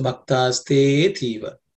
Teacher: Okay, so when it's silent, the te gets a little bit elongated